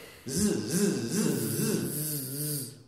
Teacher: you push with your diaphragm, and you, in your vocal cord, you will be making a vibration, which will then make all of this vibrate.